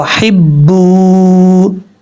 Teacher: واو مدہ ہے, 1 الف کی مقدار لمبا کر کے پڑھیں گے